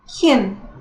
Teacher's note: Na verdade, não é bem um I, é um can. É mais, quase como se fosse uma schwa, mas não chega a ser.